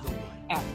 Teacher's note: kalau bunyi f itu mempertemukan gigi bagian atas dengan bibir bawah